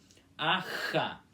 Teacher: quando temos o X no meio dos dois As, é com a garganta forçada